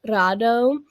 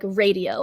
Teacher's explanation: the phoneme R has a rolling R sound where you flick your tongue against the roof of your mouth · in English the phoneme R is not a rolling sound it's shorter and your tongue does not touch the roof of your mouth